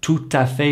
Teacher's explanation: the next letter after the T is a vowel, and that creates the liaison between the T and the A